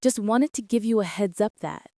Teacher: Stresses are on wan in wanted, heads in heads up, and that. The wanted to often blends to wanna.